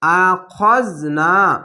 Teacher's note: এই খ অক্ষরটি মোটা অক্ষর তার আকার উচ্চারণ হবে না